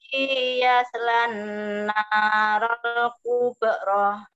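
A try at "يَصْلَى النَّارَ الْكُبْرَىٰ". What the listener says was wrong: Coba yaslan, tidak boleh yas, ada e-nya. Coba Ibu, enggak boleh tawalut.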